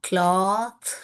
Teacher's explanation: இது வந்து அன்வாய்ஸ்டு டிஹெச், கிளாத்.